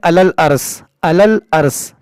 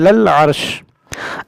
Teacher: بعض لوگ کیا پڑھتے ہیں علل ارس، تو یہ غلط طریقہ ہے. آپ کو عین وسط حلق سے ادا کرنا ہے